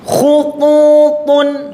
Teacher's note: Khututun harus betul-betul tebal dan kelihatan kedua pipi ini agak sedikit melembung.